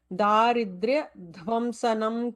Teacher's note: Dhvam is important to emphasize dham as Mahaprana there.